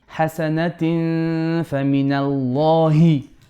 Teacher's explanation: حسنة fa. Flat Ikhfa because fa is flat.